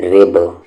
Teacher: با پر یہاں پر قلقلہ کریں گے، قلقلہ یعنی کہ آواز کو ہم باؤنس کریں گے